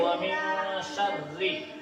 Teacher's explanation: اس میں بھی اخفا ہوگا، دیکھو یہاں بتایا گیا ہے نا، تو جو قاعدہ اس میں ہوگا وہی اس میں ہوگا، جہاں بھی نون ساکن کے بعد حروف اخفا کے 15 حرفوں میں سے کوئی بھی ایک حرف آ جائے تو وہاں اخفا ہوگا، یعنی تھوڑی دیر ناک میں آواز کو چھپا کر پڑھیں گے